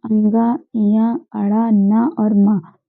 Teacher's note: ये मुंह और नाक की सहायता से जिन वर्णों का उच्चारण होता है वे नासिक्य कहलाते हैं।